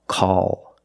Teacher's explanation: after a vowel at the end of a word, we use the dark L.